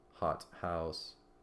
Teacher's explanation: not the or th, but just a t with breath added to it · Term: aspirated